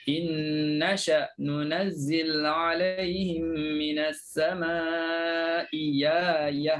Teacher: Abu Am dia baca ibdal. Ibdal tu maknanya tukar. Hamzah kedua jadi huruf ya.